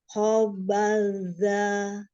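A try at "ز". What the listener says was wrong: Ayo tambahkan lagi sofirnya. Tambahkan lagi sofirnya. Za. Dilatih lagi ya huruf zainya ya. Ya, huruf H yang punya sifat hamas tambahkan lagi aliran nafasnya ya.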